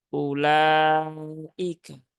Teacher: Jangan dibaca panjang ula, tetapi cukup hamzahnya dipendekkan.